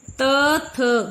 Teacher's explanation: जब त, थ बोल रहे हैं तो ऊपर वाले दांतों के साथ लग रही है जीभ, तो ये दंतव्य है।